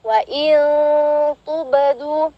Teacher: ada huruf ba sukun, dihukumi qalqalah sughra ya. Jadi pantulannya enggak terlalu kuat ya.